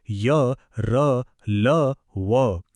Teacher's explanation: यांना अर्धस्वर म्हणतात कारण यांचे उच्चार स्वरांच्या बरेच जवळचे आहेत